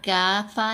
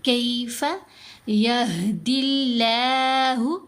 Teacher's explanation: اب کافا نہیں پڑھا جائے گا، کاف کی آواز یا کی طرف ٹلٹ ہو جائے گی. کاف زبر یا ساکن کے. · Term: یا لین